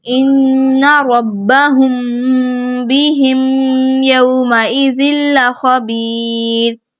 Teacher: اخفاء شفوی ہو رہا ہے، ہم غنہ کرتے ہوئے یہاں پہ پڑھیں گے۔ غنہ ہمارا اظہار اور ادغام کی درمیانی حالت کا ہونا چاہیے۔